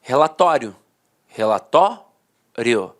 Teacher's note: A penúltima sílaba era a sílaba mais forte e a última, de fato, perdia a força. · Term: paroxítona terminada em ditongo